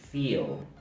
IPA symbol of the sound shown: iː